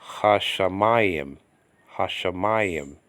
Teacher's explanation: the sheen there is doubled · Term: doubling dogish